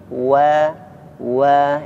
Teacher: قد أفلح من تزكى قد أفلح من تزكى وذكر اسم ربه فصلى وذكر اسم ربه فصلى. Ya, wawnya disempurnakan lagi. Wa wah, ya, dimasukkan bibirnya